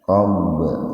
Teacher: huruf ba mati di tengah-tengah kata, jadi dipantulkan tapi sedikit saja, ringan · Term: qalqalah sugro